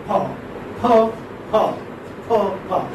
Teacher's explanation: Pa is a bilabial plosive. Bilabial voiceless plosive.